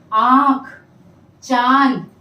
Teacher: जब हम इसका उच्चारण करते हैं तो हमारे नासिक, नासिक यानी नाक, और मुंह, इन दोनों से श्वास बाहर की तरफ जाती है। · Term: अनुनासिक